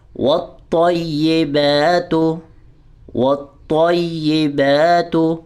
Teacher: آگے دیکھیے، والطیبات، والطیبات، واو کو جو ہم نے طا سے جوائن کرنا ہے تو طا کو بھی ہم نے موٹا پڑھنا ہے، پر پڑھنا ہے، ٹھیک ہے، اور سختی سے ملانا ہے شد کی وجہ سے، اور ہلکا سا ٹہراؤ آئے گا، اس میں رکا جائے گا۔